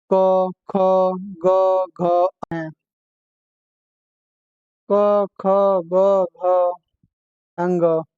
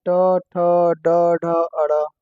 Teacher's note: जो उच्चारण करते समय कंठ ताल मुर्धा दंत और ओट स्थानों को स्पर्श होते हैं स्पर्श व्यंजन कहलाते हैं